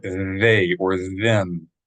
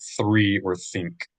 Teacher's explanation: So that's a voiced TH sound. That means you should be vibrating your vocal cords when you do it.